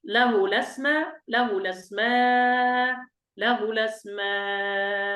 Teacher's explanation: هنا أنا قرأت بالنقل له لا قرأت بنقل حركة الهمزة إلى اللام، ثم أبدلت الهمزة هذه ألف مد وقرأت بحركتين وأربع حركات وست حركات